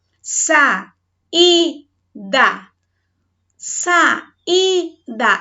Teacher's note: Formou-se aqui um hiato, separando o A do I. Esse I, ele é tônico. Esse I, ele está sozinho, portanto, ele deve ser acentuado, tá?